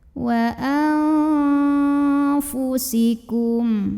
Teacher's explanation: Karena ada nun sukun yang ketemu dengan huruf fa. Maka bunyi nun sukun dibunyikan samar-samar, siap-siap ke fa ya, disertai dengungan. Samar dan dengungannya sama saja karena huruf fa ini makhrajnya tidak terlalu dekat, tidak terlalu jauh dari nun. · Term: ikhfa awsat